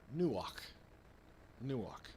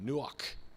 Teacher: we really don't have gutturals in english you know that kind of breathy you know sound in the back of the throat